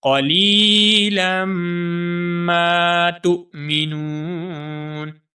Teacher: اس لام کو ہم میم مشدد کے ساتھ ملائیں گے اور میم مشدد کے اوپر ہمیشہ غنہ ہوتا ہے۔ غنہ کہتے ہیں اپنی آواز کو ناک میں لے جانا۔